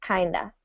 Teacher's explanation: because of stress, the of does not get pronounced fully or really at all. So kind of sounds like kinda.